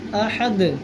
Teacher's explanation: اس کی آواز لوٹائیں گے دال کی، کیونکہ دال حروف قلقلہ ہے